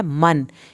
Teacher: मन यहाँ पर गुन्ना नहीं होगा, नून ज़ाहिर किया जाएगा।